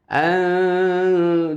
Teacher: ketika kita membunyikan suara nun sukun, maka posisi lidah kita itu sudah berada di makhraj huruf da, ta, to tersebut. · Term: ikhfa aqrab